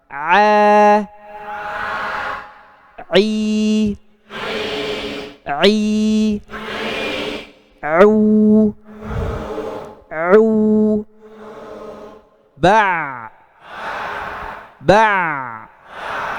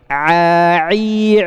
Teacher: Jadi tetap mengalir tanpa ada masuk ke khaysum, yaitu huruf ain.